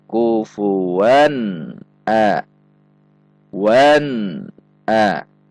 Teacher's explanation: Seharusnya antara bunyi en, a tidak ada pantulan. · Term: izhar halqi